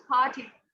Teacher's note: English language में जितने भी साउंड पी से स्टार्ट होते हैं, that doesn't start with पी, actually they start with aspirated पी